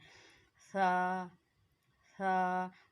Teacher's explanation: ज़बान का सिरा और ऊपर के दांतों के अंदरूनी किनारे से अदा होता है।